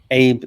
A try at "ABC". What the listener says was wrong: Without the glottal stop.